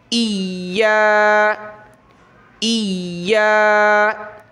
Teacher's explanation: جیسے کہ یہاں ہم اس کو زیر کی وجہ سے حمزہ پڑھیں گے، تو اس حمزہ کو ہم نے یا کے ساتھ ملانا ہے، اور یا پر شد کی وجہ سے سختی کرنی ہے، ذرا رکنا ہے